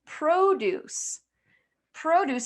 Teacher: the stress is going to be on that first syllable.